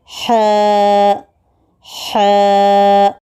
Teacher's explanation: حلق کے درمیانی حصے سے ح نکلتا ہے